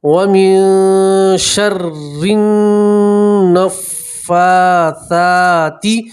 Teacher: وَمِن شَرِّ النَّفَّاثَاتِ، ٹھیک ہے، فا کے اوپر کھڑا زبر ہے اور ثا کے اوپر بھی کھڑا زبر ہے تو کھڑا زبر میں ایک الف کے برابر کھینچیں گے